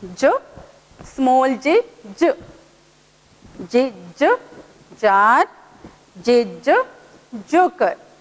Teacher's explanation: J, when you will produce the sound of J, your tongue should be down, back of your lower teeth, and produce J, J, and feel the vibration here on your vocal cord